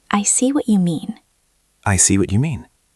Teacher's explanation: It is not flat. It goes down at the end to show seriousness. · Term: intonation